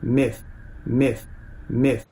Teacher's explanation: In Australia, there's a realization that is not too far off from my own American accent, for instance. Something like an ih sound. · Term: kit vowel